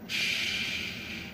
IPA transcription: ʃ